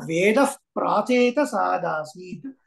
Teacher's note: విసర్గ తర్వాత ప వస్తే ఎలా పలకాలి ఫ లాగా పలకాలి